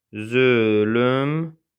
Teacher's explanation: Zülmdür tələffüz olunur zülümdü formasında.